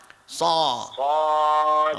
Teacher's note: Jangan so, jangan dalam sangat bunyi. Dekat sa saja.